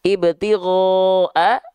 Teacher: Mad wajib mutasil itu dia boleh dibaca 4 atau 5 harokat.